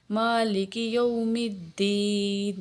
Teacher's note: مالک کے اوپر کھڑی زبر ہے اس لیے اس کو 1 الف کے برابر کھینچیں گے ، ٹھیک ہے، مالک یوم الدین، دال کے اوپر شد ہے